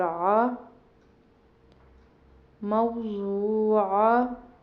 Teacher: عین کے تلفظ کا خیال کرنا ہے کہ اس کو آ نہیں پڑھنا، اس سے حلق سے نکالنا ہے